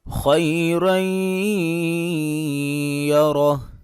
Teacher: خا حروف مستعلیہ میں سے ہے، لہٰذا خا کو پر کر کے پڑھیں گے، موٹا کر کے پڑھیں گے۔ را کے اوپر 2 زبر آ رہی ہیں تو را کو پر کر کے پڑھیں گے، آگے پھر را کے اوپر زبر ہے تو پھر را کو پر کر کے پڑھیں گے۔ · اگر یہاں پہ وقف کریں گے تو ہا کو ساکن کر دیں گے